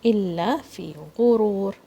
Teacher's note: غين comes from the top of your throat.